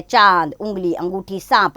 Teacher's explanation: चंद्र बिंदु देखिए इस चिन्ह का उच्चारण जो होता है ना उच्चारण करते समय नाक और मुख दोनों से हवा निकलती है